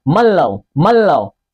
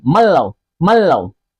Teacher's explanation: Contoh nun mati atau nun sukun bertemu dengan huruf lam pada surah Yasin ayat ke-47. Hukum bacaannya idgham bila gunnah, dimasukkan tanpa didengungkan.